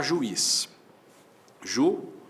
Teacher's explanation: u para um lado, o i pro outro, isso é iato, sim, porque eu tenho duas vogais que se separam, mas esse i tem na própria sílaba a companhia de um Z.